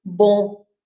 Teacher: we don't pronounce the M at the end, right? It's just the nasal sound of bon.